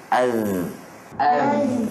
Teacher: hujung lidah dan hujung gigi atas bahagian hadapan.